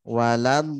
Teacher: Nanti kita bahas lengkapnya di sifat huruf ya. Jadi ketika dia lidahnya memanjang ya, sehingga ujung lidahnya ini kena gigi seri depan. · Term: huruf dod